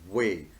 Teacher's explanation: So I am starting, the sound starts from here with the friction of the two lips, bilabial